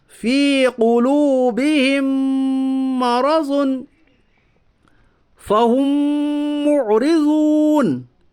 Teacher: میم ساکن کے بعد میم آیا اس لیے ادغام شفوی ہوگا, یعنی ملا کر غنہ کے ساتھ پڑھیے